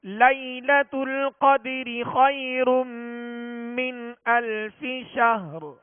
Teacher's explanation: ہا کا سکون کامل ادا کرتے ہوئے را کو ہم نے ساکن کرنا ہے، را پر آواز کو اور سانس کو ختم کرنا ہے